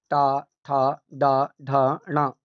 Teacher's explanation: इन सभी वर्णों का स्थान मूर्धा होता है